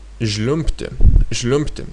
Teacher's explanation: you're not actually pronouncing B, you're pronouncing P. So instead of žliumbti, you're pronouncing it žliumbti, žliumbti.